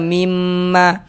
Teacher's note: bunyi nun sukun melebur masuk ke huruf mim.